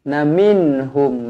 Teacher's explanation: Nun yang bertanda mati izhar halqi dibaca jelas dan terang kemudian mim yang bertanda mati izhar syafawi kedua-duanya izhar jadi kedua-duanya dibaca jelas dan terang